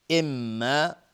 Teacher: اما میم مشدد دو حرکت غنه میدیم